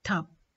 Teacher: b is not released audibly when it occurs finally